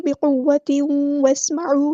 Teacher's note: यहाँ पर इदग़ाम नाक़िस हो रहा है, यानी इदग़ाम मअल गुन्ना, गुन्ना के साथ हो रहा है। सीन की सीटी हम वाज़ेह करेंगे।